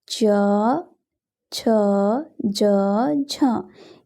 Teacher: इन चार वर्णों को स्पर्श संघर्षी व्यंजन कहते हैं।